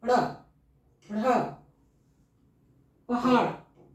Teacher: जीभ ऊपर जाता है पीछे की ओर और फिर झटके से बाहर की ओर आता है